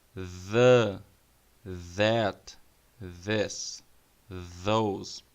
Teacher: o que você aprendeu como D vai ter a mesma forma da boca, porém você vai adicionar vibração, como se fosse um mosquito, como se fosse uma abelha.